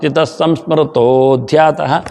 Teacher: ಸಂಸ್ಮರತೋಧ್ಯಾತ ಅಲ್ಲಿ ಓಕಾರ ಬರತ್ತದೆ ವಿಸರ್ಗದ ಬದಲಿಗೆ